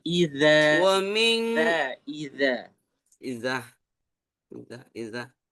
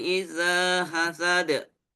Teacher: ujung lidah ketemu ujung gigi seri atas